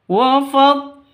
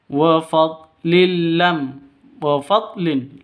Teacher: tanwin bertemu dengan lam. Cara bacanya masuk ke lam tanpa dengung ya. Tanpa deng dengung. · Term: idgham bila ghunah